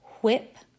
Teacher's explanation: There is the wh, as in whip, which is made at the back of the mouth